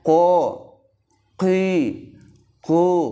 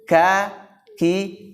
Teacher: yang satu qaf tebal ya, kemudian kaf tipis